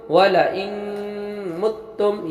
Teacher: یہاں پر نون ساکن میم آیا تو ادغام بالغنہ ہوا، غنہ کے ساتھ پڑھیں گے